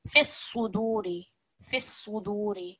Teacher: saad is one of our thick letters, so we want it to sound different to seen, which is a simpler s sound.